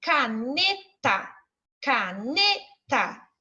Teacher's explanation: esse ne, a gente fala com mais intensidade. Então, ele vai ser a sílaba tônica da minha palavra, a sílaba forte da minha palavra.